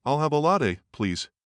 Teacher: with a calm, downward inflection